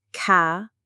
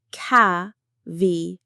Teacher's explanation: The stress is right at the beginning on the first syllable, caveat. It sounds a bit like the word cavity.